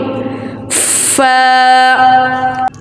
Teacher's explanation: Okay, let's see the makhraj of fa. Fa start using tip of two front teeth touching inner part of lower lip.